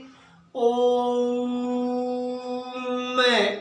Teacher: प्लुत स्वर, वे स्वर जिनके उच्चारण में 3 गुना समय लगता है। उसका उच्चारण जब हम करेंगे तो उसमें 3 गुना समय लगता है, उसको प्लुत स्वर कहते हैं।